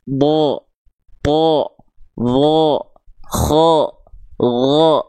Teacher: huruf-huruf tebal itu ketika dia berharakat fathah baris atas dia tidak keluar seperti vokal A tapi dia akan terdengar seperti vokal o · ketika huruf Dod berharakat baris atas maka dia dibaca dengan keadaan yang tebal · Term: huruf yang tebal